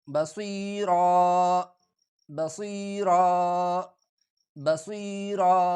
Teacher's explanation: آخر میں جب دو زبر آ جائے تو اس کو ایک الف میں کنورٹ ہو جاتا ہے، وقف کی صورت میں یہ ایک الف کی مقدار ان کو کھینچا جاتا ہے